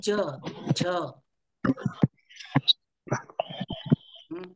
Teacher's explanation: ज्यावेळेस तुम्ही च उच्चारण करता त्यावेळेस थोडीशी जीभ दाताच्या वरती लागते